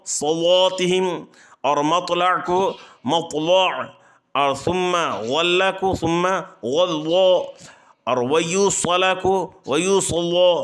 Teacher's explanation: ہر وہ لام مفتوح جو حروف مطبقہ ثلاثہ یعنی ضاد کو چھوڑ کر صاد، طا، ظا میں سے کسی ایک حرف کے بعد واقع ہو تو وہ لام ورش کے لیے پر ہوگی ، بشرطے کہ وہ حروف ثلاثہ مفتوح ہوں یا ساکن ہوں،